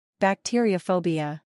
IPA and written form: bækˈtɪəɹ.ɪəʊˌfəʊbɪə (Bacteriaphobia)